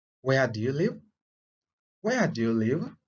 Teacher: remember, we are using a falling intonation